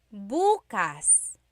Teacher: If you say buas emphasis is on the first syllable that means tomorrow